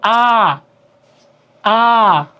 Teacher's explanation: যে স্বরধ্বনি উচ্চারণের সময় মুখ বিবর সম্পূর্ণ উন্মুক্ত থাকে